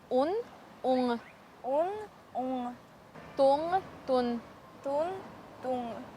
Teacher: Чтобы произнести звук «н», нужно сомкнуть корень языка к мягкому небу.